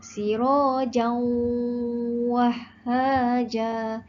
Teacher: Saya baca dengan dengung. Jadi hukumnya adalah idgham ma'al gunnah. Idgham memasukkan ma'al gunnah dengan dengung.